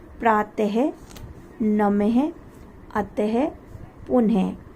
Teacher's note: विसर्ग में जो आवाज आती है वर्ड के लास्ट में, शब्द के अंत में, तो ह की आती है आवाज़।